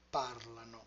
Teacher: In parlano, the stress is moved back by one syllable.